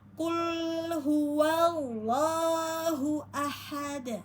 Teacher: Pada dal domah karena wakof ya, maka jadi dibaca sukun ya, karena dal adalah sifatnya qalqalah, maka kita pantul ya di belakang ayat ya, qalqalah kubro